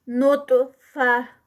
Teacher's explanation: एंड पे ता जो है, गोल ता जो है वो हा में कन्वर्ट हो जाएगी · ता हैवी और साथ में ता का कलकला, क्योंकि ये कलकला लेटर भी है, कुतुब जद में से आता है.